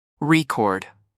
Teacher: When it's a noun, the stress is on the first syllable, record. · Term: word stress